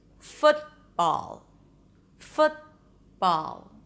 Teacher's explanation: you raise the tongue up for the T, the tip of the tongue remains up, blocking the air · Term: stop T